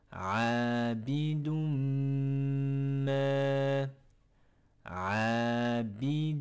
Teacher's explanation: nous avons le N, le tenwin, qui va disparaître. Et il faudra directement aller prononcer le mime, le M, en mettant une runna de façon prolongée.